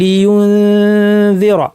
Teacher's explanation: বলার সময় জালের মাখরাজ জিব্বা রেখে নাক থেকে গুন্না, কিন্তু জালের মাখরাজে প্রেশার দিব না, ফুল প্রেশার দিব না।